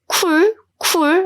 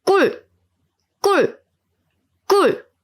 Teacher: to pronounce this tense sound, I don't use a lot of breath. I use breath, but I try not to burst, like 쿨, 쿨, 쿨.